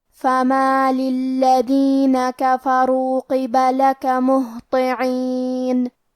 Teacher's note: کلمت الذین میں لام پہ تشدید ہے، لہذا ہم یہ حرف کو 2 حرف کے برابر پڑھیں گے کیونکہ تشدید کی اصلیت 2 حرف ہے.